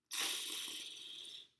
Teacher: We're going to begin by putting the tip of the tongue up behind the top teeth, like you're saying an L, and then we're going to slurp in some air underneath the tongue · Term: tongue slurp